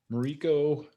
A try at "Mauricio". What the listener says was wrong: It's like an S sound at the end, so it's Mauricio.